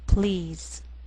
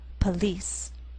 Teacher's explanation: the first is one syllable and the pl blend together please in the second word we have two syllables